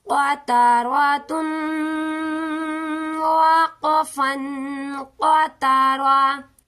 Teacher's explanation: گول تا ہو یا ہا ہو تو اس پر ہم وقف کریں گے تو آخر پر ہا کی آواز ہی آئے گی، تا کو نہیں پڑھیں گے